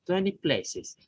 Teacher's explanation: Now consider the phrase 20 places, where places normally carries stronger stress than 20.